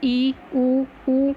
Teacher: उसके बाद संवृत, जिन स्वरों के उच्चारण में मुख द्वार लगभग बंद रहता है, जैसे ई, ऊ।